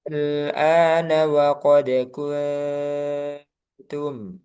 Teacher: Nah, sehingga dia termasuk kaidah mad lazim dalam satu kata. Jadi A-nya yang asalnya 2 harokat itu ini dibaca 6 harokat. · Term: mad lazim kalimi mukhaffaf